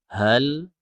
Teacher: Hal, ya, pastikan huruf H itu di tenggorokan bawah. Hal ata. Kemudian huruf lamnya jangan sampai memantul, jangan tawallud.